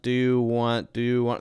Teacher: that's kind of one continuous piece do you want and it's very flowy